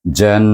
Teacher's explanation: Jan itu bertemu dengan nun yang bertasydid. Suku kata pertama bunyi jan itu hendaklah diwajibul gunnahkan dia dengan gunnah 2 harakat.